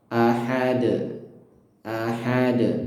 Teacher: huruf dal yang di akhir ayat yang diwakaf di situ, sehingga dia harus disukun dan harus dipantulkan ya, dengan pantulan kuat